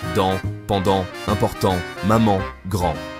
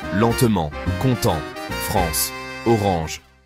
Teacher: La langue est détendue, l'air circule au-dessus. Le voile du palais s'abaisse. C'est la nasalisation.